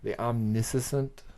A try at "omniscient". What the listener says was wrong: You threw a couple extra syllables in there.